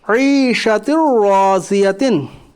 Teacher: ता के नीचे 2 ज़ेर की तनवीन है, 2 ज़ेर की तनवीन के हुरूफ यरमलून के 6 हरफों में से रा है इसलिए इदगाम ताम होगा, यानी मिलाकर बग़ैर गुन्ना के जल्द पढ़िए। अलिफ से पहले पुर हरफ है इसलिए अलिफ भी पुर पढ़ा जाएगा, चूँकि रा मुशद्दद रा मुशद्दद के ऊपर ज़बर से रा मुशद्दद पुर पढ़ी जाएगी।